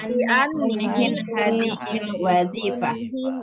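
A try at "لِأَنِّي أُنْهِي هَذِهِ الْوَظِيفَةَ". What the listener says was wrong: Unhi. Unhi. Ayo, li'anni unhi hadhil wazifah. Pakai doma ya, unhi.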